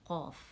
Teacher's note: الحلق ہے، تو اس کے فوراً بعد والا حصہ ہے، یہ اوپر جاتے نرم تالو سے لگے گا تو قاف ادا ہوگا